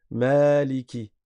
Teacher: On prolonge parce qu'il y a un alif.